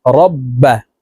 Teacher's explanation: তাসদিদওয়ালা হরফ পূর্বের হরকতের সঙ্গে একবার উচ্চারণ হবে আবার নিজ হরকতের আরেকটি উচ্চারণ হবে তো এই বাটি দুইবার উচ্চারণ হবে র বা জবর রব বা